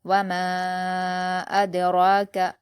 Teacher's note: ہم میم کے الف مدہ کو 4 حرکات کے برابر کھینچ کر پڑھیں گے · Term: مد منفصل